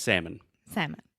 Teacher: salmon is spelled s-a-l-m-o-n but for whatever reason we do not pronounce the L